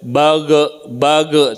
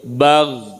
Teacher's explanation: ghin itu bukan huruf qalqalah, jadi tidak boleh mantul, tidak boleh bage, tidak boleh gitu, tapi bagh.